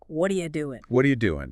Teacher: You see how the sounds link up? The T at the end of what kind of blends with the R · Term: linking